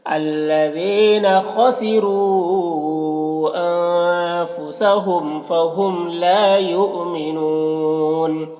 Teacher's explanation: لا میں الف مدہ ہے، ایک الف کے برابر کھینچیں گے. یؤمنون یہاں پر حمزہ ساکنہ جھٹکا لگے گا، نون میں وقف کی صورت میں مد عارض وقفی ہوگا، تو اس طرح سے پڑھیں گے.